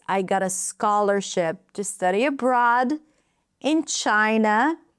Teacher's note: Scholarship abroad China. Those words are longer. Everything else is shorter and reduced.